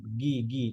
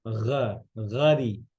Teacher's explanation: গয়েনের মধ্যে রখাওয়া আছে কিন্তু আপনি বাংলা যে গ ওটার মধ্যে রখাওয়া নাই